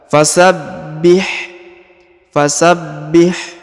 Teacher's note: huruf ba berharakat tasdid ya maka ditahan dan ditekan pada huruf ba